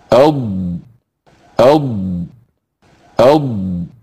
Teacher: سميت الضاد مستطيلة، لأن الهواء الذي فيها يطول ويصبح أطول مما كان عليه عند بدء نطقها